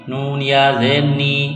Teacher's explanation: نون مشدد پر غنہ کریں گے، آواز ناک میں چھپائیں گے